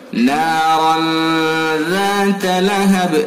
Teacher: اخفا کریں گے، یعنی 1 الف کے برابر ناک میں رکیں گے